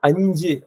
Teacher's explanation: நாக்கோட இடைப்பகுதியும் அன்னத்தோட இடைப்பகுதியும் சேரும் போது பிறக்கிறது